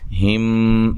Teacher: میم کا میم میں ادغام ہو جائے گا غنہ کے ساتھ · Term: میم ساکن کا ادغام